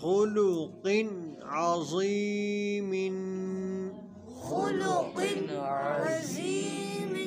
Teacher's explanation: تنوین کے بعد حروف حلقی میں سے عین آ رہا ہے تو اظہار حلقی ہوگا، یعنی غنہ نہیں کریں گے